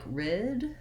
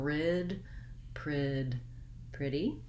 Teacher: pr blend at the beginning so work on your r separately pull the tongue back get into that tight american r position